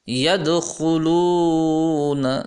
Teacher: دال کے اندر قلقلہ یعنی جھٹکے سے اس کی آواز نکالنی ہے